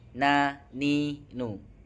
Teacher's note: ujung sisi lidah dengan rongga atas setelah huruf lam adalah tempat keluarnya huruf nun. Na, ni, nu, ujung ujung sisi lidah dengan rongga atas.